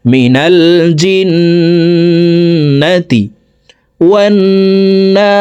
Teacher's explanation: দেখুন হরকতের বামে নুনের উপরে তাসদিদ আছে, এই কারণে জেরওয়ালা জিমটি তাসদিদওয়ালা নুনের সাথে 3 সেকেন্ড পরিমাণ গুন্নাহ করে পড়ব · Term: ওয়াজিব গুন্না